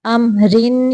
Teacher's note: اگر ہم یہاں پہ ملانے کی صورت میں پڑھیں گے تو پھر ہم را کے نیچے زیریں ہیں تو ہم را کو باریک پڑھیں گے۔ اگر ہم یہاں پہ رکیں گے تو پھر را ساکن کے پچھلے حرف کے اوپر زبر ہے، پھر ہم را کو موٹا پڑھیں گے۔